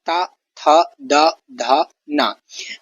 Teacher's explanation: जीभ दांतों से टकराती हुई इन वर्णों का उच्चारण करती है, इसीलिए इसे दंत वर्ण कहा जाता है।